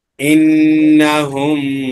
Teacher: মিম সেকেন্ডের পরে মিম আসছে, এজন্য গুণ করে পড়তে হবে।